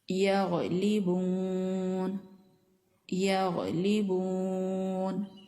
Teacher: गन साकिन है और इसकी आवाज गले के ऊपरी हिस्से से आ रही है